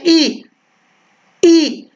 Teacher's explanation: जब बोलते हैं ई तो तालु पर जोर आता है